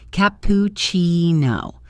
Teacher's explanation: The stress is on that CCI part, which has a chi sound.